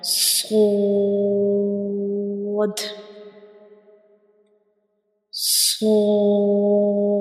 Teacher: You can see when we pronounce sword, the tip of the tongue rises towards the upper palate, touching the gums behind the upper two front teeth